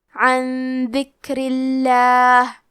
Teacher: حرف را کے نیچے زیر ہے تو ہم را کو پتلی آواز میں پڑھیں گے اور لفظ الجلالہ مطلب کلمت اللہ کے لام کا حکم ہے ترقیق تو ہمیں حرف اللام کو پتلی آواز میں پڑھنا ہے